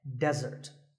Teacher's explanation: here the stress is on the first syllable